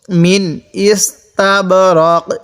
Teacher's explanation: এই নুন সাকিনের মধ্যে গুণনা করব না